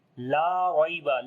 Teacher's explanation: Lam we read in light sound, and also we long due to alif madda.